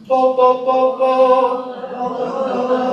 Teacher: If you don't, then that means your soft palate is lifted. We're not getting airflow to the nose.